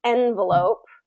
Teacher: So we have first syllable stress, envelope, and we still get the, all of the rules that apply with our vowels still apply here.